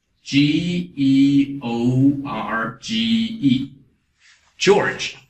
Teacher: Because American George, you have this R. So for American English, you're going to pronounce the R, but British English, we don't.